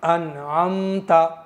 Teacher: यानी नून को गुनगुना करके नहीं पढ़ेंगे गुन्ना नहीं करेंगे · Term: बिला गुन्ने